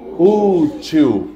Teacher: A mais forte é a penúltima.